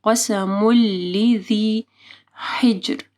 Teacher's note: قسم لذی حجر، ہا کو واضح پڑھنا ہے، گلے کے درمیانی حصے سے جیم کے اوپر قلقلہ کرنا ہے۔